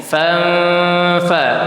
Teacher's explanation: ketika ada nun mati bertemu dengan huruf ikhfa itu dibacanya dengung. Fanfa dengungnya dua harakat.